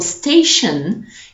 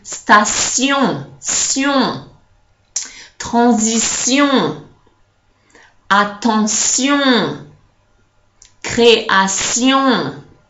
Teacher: the T that in English is a sh is going to turn into a s.